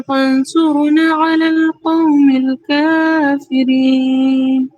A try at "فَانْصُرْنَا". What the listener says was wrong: فانصرنا، یہاں پہ غنہ کے ساتھ اخفا کریں گے. آپ نے اخفا کیا تھا بٹ غنہ نہیں کیا تھا. فانصرنا.